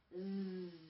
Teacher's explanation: Z는 입술이 나오지도 않고 혀를 아래다 놓으시고 천장에 안 닿고 z 하고 떨리면 됩니다